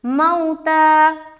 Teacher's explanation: واو ساکن اس سے پہلے زبر آ گیا تو اس کو ہم جلد اور نرمی کے ساتھ ادا کریں گے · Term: واولین